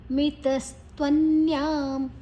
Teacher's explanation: ನ ಮತ್ತು ಯಾ ನ್ಯಾ ಆದ ನಂತರ ಅನುಸ್ವರದ ಉಚ್ಚಾರಣೆ ಮ